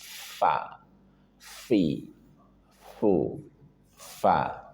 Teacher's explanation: ada huruf fa ujung gigi atas bertemu dengan perut bibir bagian bawah.